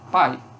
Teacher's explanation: eu tenho uma única sílaba e tenho encontro numa vogal com uma semivogal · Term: ditongo decrescente